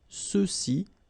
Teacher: remember final X is not pronounced, so you get the sound ce